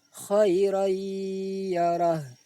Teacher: bunyi tanwin dimasukkan ke dalam huruf ya sambil didengungkan. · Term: idgham bi ghunnah